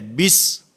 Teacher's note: با کے نیچے کسرہ ہے، لیکن اس کو معروف پڑھنا ہے۔ بسا اوقات توجہ نہیں ہوتی جس کی وجہ سے مجہول ہو جاتا ہے۔